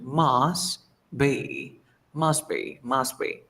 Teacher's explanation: you drop the T sound because the T between two consonant sounds you drop it